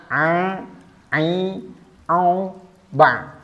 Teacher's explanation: huruf Ain ini bergetar menggetar epiglotisnya